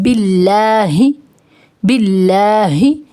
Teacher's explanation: اعوذ باللہ، باللہ، یہاں پر جو اس میں اللہ ہے اس کو آپ نے باریک پڑھنا ہے، اس میں اللہ کے لام کو باریک پڑھنا ہے